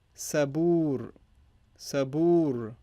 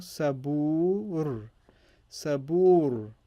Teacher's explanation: ba, you should notice that it has an extra elongated long vowel